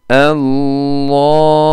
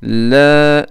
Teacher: Dil ucunda bir değişiklik yok ama ikinci önemli değişiklik şudur ki ince lamda ses dilin alt tarafından gelmektedir. Kalın lamda ise dilin üst tarafından ses hapsolmaktadır.